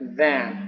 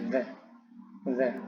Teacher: Kalau dalam penjelasan makhraj huruf dalam bahasa Arab itu seperti huruf za dan dho. Nah, cara pengucapannya itu ujung lidah itu digigit sedikit oleh gigi atas dan gigi bawah, agak keluar sedikit